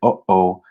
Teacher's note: there's also the glottal stop just like in klingon that's the sound that you produce when you say something like oh oh